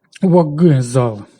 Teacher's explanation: Чуємо «вокзал». Глухий «к» вимовляється як «г» під впливом дзвінкого «з».